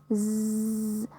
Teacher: we produce this sound continuously it will be like z yeah you can touch your throat and you can feel the vibration by pronouncing this sound